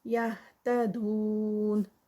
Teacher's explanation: دون پہ 4 کاؤنٹس کا اسٹریچ ہے کیونکہ وہ مد ہے